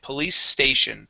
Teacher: even though it ends with a C, that makes an S sound, and station starts with an S. So we say police station. I do not produce two S sounds.